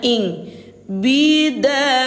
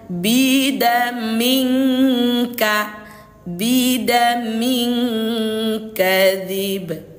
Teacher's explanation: Yang disamarkan ini suara tanwin ini disamarkan ke huruf kaf, disertai dengan dengung 2 harokat. Jadi ayah Bunda, samar dan dengungnya itu sudah bergabung, dia 2 harokat. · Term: ikhfa abad